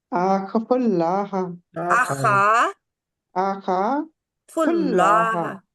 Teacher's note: इसको खा को खींचे दो हरकात के बराबर